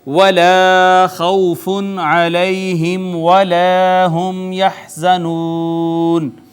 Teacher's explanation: یہاں یہ الف مدہ ہے، واو کا ما قبل مفتو، واو لین، نون تنوین کے بعد حرف اظہار، لہٰذا یہاں پہ اظہار، یا کا ما قبل مفتو، یا لین، میم ساکن پہ اظہار شفوی، پھر الف مدہ، میم ساکن پہ پھر اظہار شفوی، اور پھر واو مدہ، حرف مدہ کے بعد سکون عارضی، لہٰذا مد عارض بھی یہاں پہ ہوگی